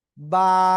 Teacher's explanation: দুই ঠোঁটের ভিতরের অংশ থেকে এক আলিফটা নিয়ে উচ্চারণ করব